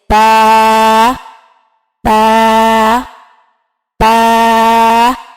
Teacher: با دونوں ہونٹوں کو ملانے سے ادا ہوتا ہے